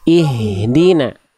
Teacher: H besar dari pangkal tenggorokan, jangan berbisik nafasnya.